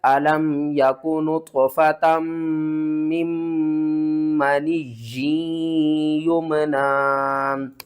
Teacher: 2 میم اکٹھی مشدد آ رہی ہیں، تو دونوں میم کے اوپر آپ نے غنہ کرنا ہے